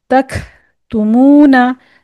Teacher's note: काफ जब साकिन हालत में हो तो इसको हमस करेंगे